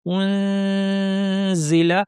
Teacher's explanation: নিচের পাটির দাঁতের গোড়ায় জিহ্বাকে নিয়ে আমাদের নাক থেকে গুন্না করতে হবে। তাহলে ইখফা হয়ে যাবে।